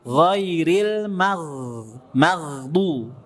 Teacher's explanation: tetap mengalir suara ghain sukunnya. Maghdu, bukan maghdu enggak, tapi maghdu. · Ghain itu kalau sukun ya, ghain itu punya sifat rakhawah. Rakhawah itu aliran suara mengalir. Nah, ketika sukun mengalir tuh, ya, Jadi ketika baca surat Al-Fatihah, ghairil maghdu, tetap mengalir suara ghain sukunnya.